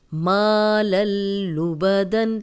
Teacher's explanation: تنوین کے بعد بھی لام آیا ہے تو غنہ نہیں ہوگا